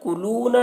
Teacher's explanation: یہاں پر واو مدہ ہے، اسے ایک الف کے برابر کھینچ کر پڑھیں گے.